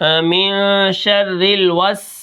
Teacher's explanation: سین کے اندر ہم سیٹی ادا کریں گے، اس کے اندر سیٹی ہے